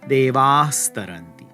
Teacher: the visarga is going to turn into a dental s, devas taranti.